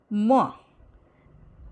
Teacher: For the articulation of m sound, a closure is formed at the lips. The soft palate is lowered to allow a free passage of air through the nose. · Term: bilabial nasal